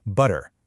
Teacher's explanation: It's called a flap. Your tongue makes one single super fast tap against the roof of your mouth, right behind your teeth. It's actually a lot like the T sound in the American pronunciation of the word butter.